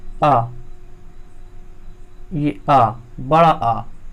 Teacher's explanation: इसके उच्चारण में मुख सबसे अधिक खुलता है और यही है विवृत स्वर।